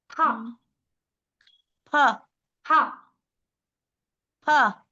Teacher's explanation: फा बोला तो फिर ओष्ठ को ही और दबा के महाप्राण निकालिए